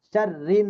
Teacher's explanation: শাররি র চিকন, র গিয়ে নুনকে ধরবে, গুন্না